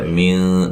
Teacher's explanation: نون ساکن کا اخفا ہے، باریک غنہ کریں گے، اخفا مع الغنہ